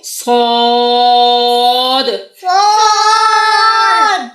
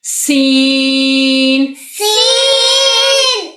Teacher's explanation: صاد کو موٹا پڑھیں گے، سین کو باریک پڑھیں گے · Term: موٹے حروف